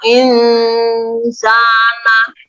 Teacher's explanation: ini namanya bacaan ikhfa. Alasannya atau karena ada huruf nun sukun bertemu dengan huruf sin. Nah, jadi membacanya samar.